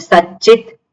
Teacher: તાલવ્ય થઈ ગયું. એટલે સત જે છે એમાં તના સ્થાને ચકાર થયું, એટલે સચિત.